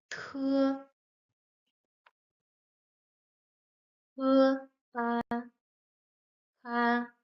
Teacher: T is like the English T, but as it goes with the p sound, it's stronger and it makes some air flow out. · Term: the t sound